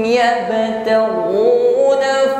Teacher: sukun pantulkan ya, pantulannya ringan, qalqalah sughra, qalqalah berada di tengah kalimat. Yabtaghu ghi hu yabtaghuna fa huruf ba sukun istithalah, ini nampak sifat istithalah namanya, keluar dari hafatul lisan, lidah bagian samping bertemu dengan gigi geraham bagian atas.